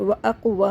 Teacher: قاف پہ قلقلہ کریں گے